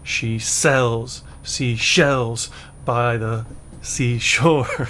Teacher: so the stress is on cells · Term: I Amic stress